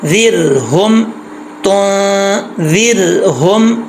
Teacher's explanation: आगे ज़ाल है, ज़ाल बरीक पढ़ा जाएगा नॉर्मल, और रा साकिन है, लेकिन यहाँ पर रा साकिन से पहले ज़ेर है, इसको बरीक पढ़ेंगे, पुर नहीं पढ़ेंगे।